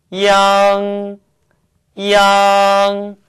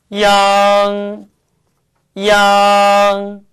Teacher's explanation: 앞에 이를 짧게 발음하시고 앙 발음하시면 되는데 두 개의 발음이 끊어지지 않고 자연스럽게 이어질 수 있도록 연습해 보세요.